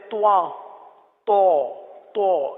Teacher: تواں تو یعنی ہونٹوں کو گول کر کے پڑھتے ہیں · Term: طا